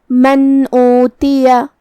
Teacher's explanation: ہم یہاں نون ساکن ظاہر کریں گے اور بغیر کوئی غنہ سے یہ حکم کو ادا کریں گے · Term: اظہار